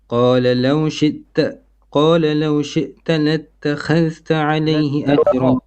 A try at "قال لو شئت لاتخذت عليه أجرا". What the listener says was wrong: خاء is heavy.